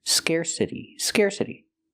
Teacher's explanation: We hear the T pronounced like a fast D because it's between vowels.